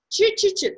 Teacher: Це є середньоязикове. Ви маєте вимовляти середньоязиково. Чи-чи-чи. Тобто не ци-ци-ци, не спереду, не ззаду, а середина.